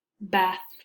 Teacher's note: and our bottom lip also touch the air also stops briefly but the letter B is voiced